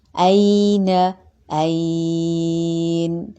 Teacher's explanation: یا ساکن سے پہلے زبر آیا ہے تو یہ یائے لین ہو رہا ہے، اور وقف کی صورت میں مد عارض لین۔